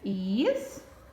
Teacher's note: E a minha sílaba tônica é is. Ela é classificada como oxítona.